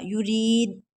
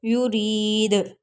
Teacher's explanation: دال جو ہے حروف قلقلہ ہے تو اس میں قلقلہ کریں گے. قلقلہ کا مطلب ہے دوبارہ آواز آنا. یرید، دال کو دبائیں گے نہیں، یرید.